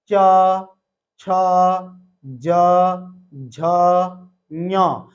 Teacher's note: हमारी जीभ का बीच वाला भाग ऊपर टच हो रहा है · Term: तालू, तालु